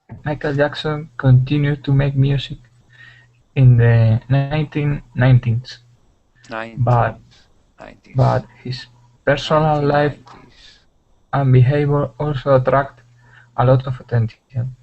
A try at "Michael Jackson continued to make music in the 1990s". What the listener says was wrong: I understand. That's very good.